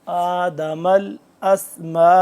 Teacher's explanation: आ चार अलिफ के बराबर इसको लंबा करेंगे